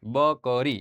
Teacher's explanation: પણ બ બોલવા માટે આપણે બંને હોઠ અડાડવા પડશે